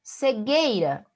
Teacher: Cegueira, o U não é pronunciado do GU. Então, nós temos dígrafo.